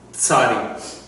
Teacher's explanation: It starts with a T. So the sound actually starts with your tongue on the back of your teeth like you're going to say T.